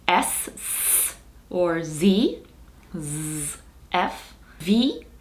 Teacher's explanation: They are sounds that are made by the friction of breath. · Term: fricatives